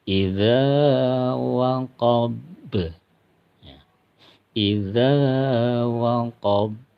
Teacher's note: huruf ba jadi ketika dia mati atau mati karena wakaf maka harus dipantulkan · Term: Qalqalah Kubro